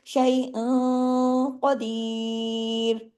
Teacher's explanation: آواز میں تھوڑا سا موٹا پن آ جائے گا، تھوڑی آواز ناک میں رہے گی تھوڑی باہر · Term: اخفا